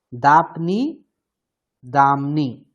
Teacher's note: অনুনাসিক মকার হয়ে যাবে এখানে ঠিক আছে যেহেতু পরে নকার আছে অনুনাসিক এইজন্য দামনি হয়ে যাবে